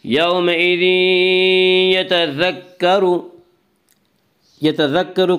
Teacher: یہاں را کے اوپر پیش اس لیے را کو پر پڑھیں گے